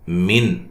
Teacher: نون ساکن کا اظہار ہے، غنہ نہیں کریں گے